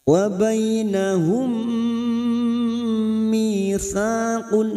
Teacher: Wa bainahum mim sukun bertemu mim 2 huruf yang sama yang pertama sukun namanya bacaan idgham mimi masuk ke huruf mim berikutnya dan mendengung selama 2 atau 3 harokat. Wa bainahum mitsaqun namanya bacaan idgham mimi.